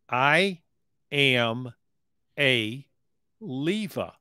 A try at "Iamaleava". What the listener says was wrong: Yeah, but I don't think you're pronouncing it right. You got it down, but you got the "muh" in there.